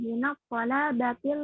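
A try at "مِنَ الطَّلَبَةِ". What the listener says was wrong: Pendek tolabah, minat tolabah.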